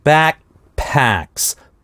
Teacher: Back здесь /k/ безрелизный, потому что два стопа, /kp/, backpacks, в таком случае первый стоп произносится без релиза